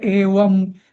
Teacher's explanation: फक्त जो अनुस्वार आहे ना तर तिथे मी सगळीकडे म म्हणणार आहे